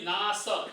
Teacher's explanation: नाशम नहीं, नास छोटा स है, दंत्य स है